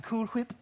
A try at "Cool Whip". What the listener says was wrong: Why are you saying it like that? Oh, you're saying Cool Whip. You're putting a lot of emphasis on the H.